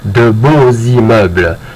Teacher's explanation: So any noun that's masculine, plural, and starts with a vowel, except that we're going to spell beau the same way, but we're going to pronounce the X on the end like a Z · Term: liaison